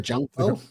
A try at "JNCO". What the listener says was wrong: No, it's Jinko. There's no U in it. It's just JNCO. It's Jinko.